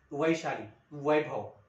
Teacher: दंतोष व असं कधी आपण जाणलंच नाही कधी जाणूनच घेतलं नाही म्हणजे दात आणि ओठ मिळून यांची व ची रचना होते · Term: दंतोष्ठ वर्ण